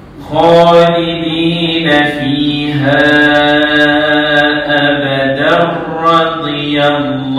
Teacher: Dia jadi idgham bila ghunna. Ha dia masuk ke ra.